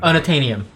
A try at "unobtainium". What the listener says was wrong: Unobtainium. I don't think there was a B in that word you said, but okay.